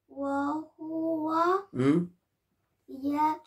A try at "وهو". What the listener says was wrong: لا مو يا